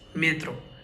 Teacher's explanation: The ye is not stressed, so we do not read it as mietro. We read it as metro, metro, metro.